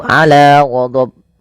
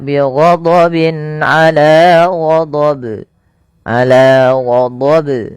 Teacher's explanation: Nah, itu juga salah. Yang benar adalah tidak menambahkan hamzah dan dia harus memantul. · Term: qalqalah kubra